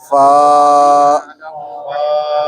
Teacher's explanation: فا کا مخرج ہے اوپر والے دانتوں کا کنارہ اور نیچے والے ہونٹوں کا تر حصہ